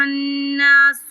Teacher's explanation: نون مشدد ہے، اس پر غنہ کریں گے ایک الف برابر